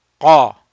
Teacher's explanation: We're raising the back of the tongue.